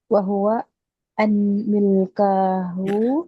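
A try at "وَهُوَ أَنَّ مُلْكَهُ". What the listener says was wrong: anna. Kalau setelahnya isim mulka kan mansub ya, berarti syaddah anna.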